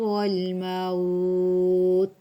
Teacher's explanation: واو ساکن اس سے پہلے زبر ہے تو یہاں پہ لین ہو رہا ہے، لیکن جب لین پہ وقف کرتے ہوتے ہیں تو ان کو مدہ جتنا لمبا کرتے ہوتے ہیں.